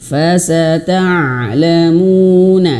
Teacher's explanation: Ainnya harus mengalir. Ain di antara sifatnya yaitu dia memiliki sifat tawassud, mengalir sedikit. Jadi gitu. Jangan seperti huruf hamzah. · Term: huruf ain